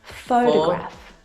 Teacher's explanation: the first syllable is the stressed syllable. You can hear it very clearly.